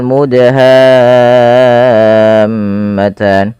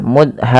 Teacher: huruf Dal ini wajib kita baca dengan bacaan Qalqalah yaitu huruf dalnya harus memantul ya harus kita pantulkan kesalahan yang terjadi dalam membaca Qalqalah tidak